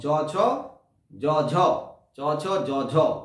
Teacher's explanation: তাই জীবের অংশ যখন তালুতে স্পর্শ করে যখন ধ্বনিগুলো উচ্চারিত হয় তখন তাকে তালব্য ব্যঞ্জন বলা হয়। যেমন চ, ছ, জ, ঝ, চ, ছ, জ, ঝ, জ বলতে বর্গে জ, চ, ছ, জ, ঝ, একটু দেখবে তালুতে স্পর্শ করছে।